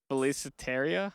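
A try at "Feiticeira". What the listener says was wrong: Well, it's not Philippe because there's not an L in it. I think it's just Featusera.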